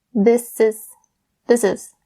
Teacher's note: So we bring that S sound over from this to is. This is. And it just makes it a lot faster when you are saying it within the sentence.